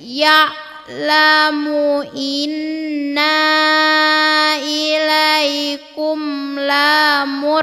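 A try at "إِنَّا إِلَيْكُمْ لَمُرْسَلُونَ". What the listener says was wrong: Lanya pendek, kenapa panjang? Inna ilaikum lamursalun. Coba.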